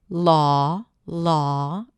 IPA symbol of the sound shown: lɔː